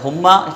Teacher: پھر میم کے اندر جو ہے ایک الف کے برابر ہم غنہ کر کے پڑھیں گے